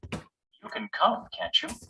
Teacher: we use Rising intonation with Tag questions to ask a real question to check information or to express hope if something is true